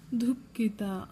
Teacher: ನಾವು ಹೆಚ್ಚು ಉಸಿರನ್ನ ಬಿಟ್ಟು ಕಿನ ಪ್ರೊನೌನ್ಸ್ ಮಾಡಿರೋದು ಹಾಗಾಗಿ ಮಹಾಪ್ರಾಣ ಕಿ ಬರೀಬೇಕು ಸೋ ಡಿ ಎಚ್ ಯು ದು ಕಿ ಕೆ